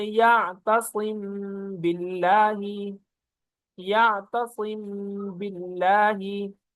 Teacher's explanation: ادائیگی کا طریقہ: میم کے اخفا کا مطلب یہ ہے کہ میم کو ادا کرتے وقت دونوں ہونٹوں کے خشکی والے حصے کو نرمی سے ملا کر غنے کے ساتھ ادا کریں گے، پھر ہونٹوں کے کھلنے سے پہلے دونوں ہونٹوں کے تری والے حصے کو سختی سے ملا کر با کو ادا کریں گے، جیسے یعتصم باللہ، یعتصم باللہ۔